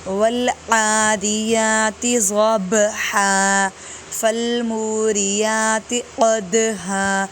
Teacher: با اور دال حروف قلقلہ میں سے ہے، ہلا کے پڑھیں گے